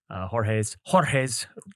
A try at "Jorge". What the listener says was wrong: roll your R, bro.